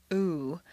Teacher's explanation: a strong non-reducible sound ooh that is made far forward in the mouth with the lips fully rounded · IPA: [u]